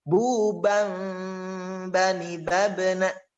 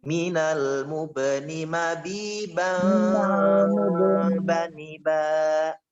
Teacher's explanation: huruf ba termasuk huruf iqlab. Artinya membalikkan atau merubah suara nunnya dengan huruf mim. Membalikan huruf nunnya dengan huruf mim.